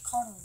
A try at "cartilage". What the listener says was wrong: You said curtilage. It sounded like you said curtilage.